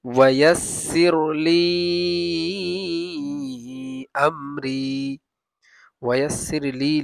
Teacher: লি তিন আলিফ লম্বা হবে আর আমরি রি এক আলিফ হবে